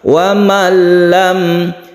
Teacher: Wa malam, mim mati bertemu dengan ya disebut izhar syafawi. Dinamakan syafawi karena mim ini makhrajnya di bibir, harus mingkem ya. Lam kemudian tidak didengungkan karena izhar.